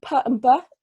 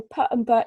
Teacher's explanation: where I stop the airflow with my lips where my lips come together and then we have an explosion of sound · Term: bilabial plosive